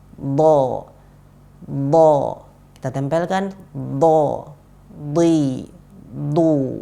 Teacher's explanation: Jangan pakai ujung lidah, iya, jangan pakai ujung lidah karena dot ini dia huruf yang keluar dari tepi lidah, nempelnya ke gigi geraham atas. Jadi harus kita lafadzkan lewat sana, tepi lidah kita tempelkan ke gigi geraham atas.